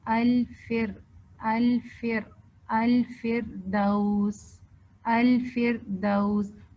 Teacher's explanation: فا جو ہے نا یہ رخاوہ کا لیٹر ہے اور اس میں ہمس بھی ہے. اسی طرح اس کو آپ نے سافٹلی پڑھنا ہے اور را کے اندر جیسے توسط بھی ہے تو ہم نے را کو تھوڑا ٹچ کرنا ہے.